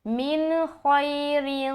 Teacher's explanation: اظہار کا قاعدہ، صرف نون کو ظاہر کرنا ہے